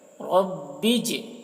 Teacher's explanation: جیم میں قلقلہ کریں گے کیونکہ جیم حروف قلقلہ میں سے ہے اور اس کے اوپر جزم ہے